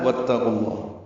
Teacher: تا پر زبر پڑھیں گے، واو کو تا سے ملائیں گے، الف نہیں پڑھیں گے